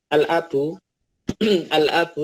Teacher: hamzah itu masuk ke dalam alif lam qamariyah karena dibaca jelas lamnya, tidak dileburkan